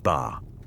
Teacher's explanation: A flat level tone, ba, is a simple statement.